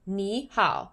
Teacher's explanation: For example, if there's a third tone and then a third tone again, the first third tone turns to a second tone